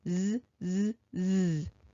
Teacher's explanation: Ooh, that apostrophe S, the S is making its voiced sound